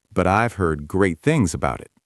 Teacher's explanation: The words heard, great, and things all link together smoothly.